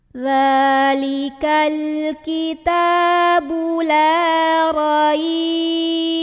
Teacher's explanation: Raibnya jadi panjang, boleh sampai 6. 2, 4, 6. Kalau berhenti di sini.